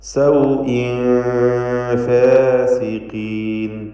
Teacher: സൗഇൻ എന്ന ആ തൻവീനിനെ ഇഖ്ഫാ ഹഖീഖി നൽകി മറച്ച് മണിക്കണം, അവ്യക്തമാക്കി മണിക്കുക.